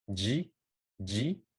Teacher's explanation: the Z sound does not exist in Japanese, but instead we use J.